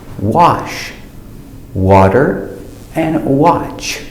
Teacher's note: after W it changes to the open sound ah like stop and hot